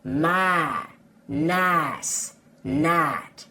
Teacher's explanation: for a southern accent, we cut off that second sound, which gives us my, nice, night.